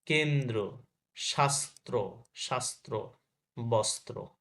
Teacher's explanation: মধ্যে বা শেষে যুক্ত ব্যঞ্জনের সঙ্গে র ফলা থাকলে দ্বিত্ব উচ্চারণ হয় না। যেমন কি কেন্দ্র, কেন্দ্র শেষে আছে কিন্তু, কেন্দ্র, শাস্ত্র, শাস্ত্র, বস্ত্র।